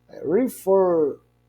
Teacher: a pronúncia do fer é mais forte que o re · refer, nós temos aí a sílaba tônica na última sílaba